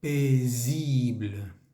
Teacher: Tenemos una S que está entre dos vocales, entre la I y la I. Vamos a hacer vibrar esa S.